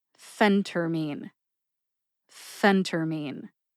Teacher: emphasize the first syllable which is Fen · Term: emphasis